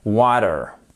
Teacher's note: le t il devient presque un D